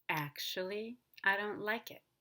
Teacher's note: with introductory words we will rise at the end but we will fall before we rise